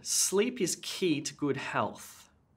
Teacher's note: you'll notice when you look at these speech patterns is that meaning words like sleep key good and health have quite a large emphasis and the grammatical words like ears and two have much smaller